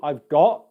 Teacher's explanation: The T at the end of words, got. It's a very soft T. You can either have no airflow come out like this, I've got, or some airflow, I've got. Both are fine, but what we want to avoid is got or got.